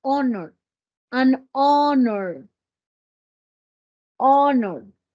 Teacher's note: Mire, tiene la H, pero no tiene sonido de la J.